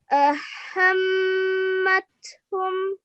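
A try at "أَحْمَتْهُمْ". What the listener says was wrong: یہ ہاں آپ کی نا وہ دوسری والی ہاں کی آواز آتی ہے. پھر پڑھیں.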